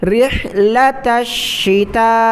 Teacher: را کو ہا کے ساتھ ملائیں، ہا کو گلے سے نکالیں ، رحلۃ الشتاء، تا کو شین کے ساتھ ملانا ہے اور